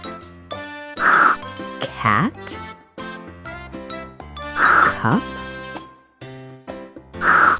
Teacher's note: It's a strong puff of air from your tongue.